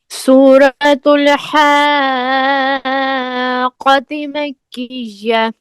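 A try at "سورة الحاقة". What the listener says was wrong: آپ نے قاف کو ٹائٹ نہیں کیا، شد ہے نا، اس کو آپ نے زبان کو حاقہ یہاں پر دبا کر آواز بند کر کے پھر آپ قہ کہیں،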